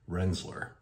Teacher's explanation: Or I've even heard locals who've lived there for 50, 60 years, they've come up with Rensselaer, almost a Z on the S's there